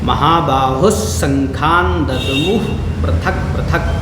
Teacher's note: देखिए महाबाहु विसर्ग के बाद क्या है, तालव्य सकार है तो यहाँ पर भी उच्चारण कैसा होगा, तालव्य सकार का ही उच्चारण यहाँ पर विसर्ग का हो जाएगा